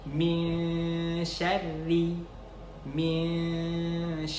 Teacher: posisi lidah ketika kita mengucapkan huruf nun sukun bertemu dengan Syekh itu mengambang GTA jadi seakan-akan dia berada ditengah-tengah antara langit-langit sama bagian bawah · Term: ikhfa